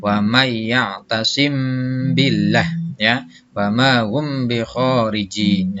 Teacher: Ikhfa syafawi adalah di mana-mana ada mim mati bertemu dengan huruf ba. Maka membaca mim matinya harus disamarkan serta memakai dengung.